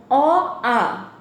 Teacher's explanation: অ, আ উচ্চারণ স্থান হচ্ছে কণ্ঠ